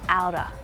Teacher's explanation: The Australian accent will use the flap T. Same with the American one.